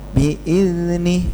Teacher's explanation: Bi'izni, zalnya yang jalan karena punya sifat rokhawah.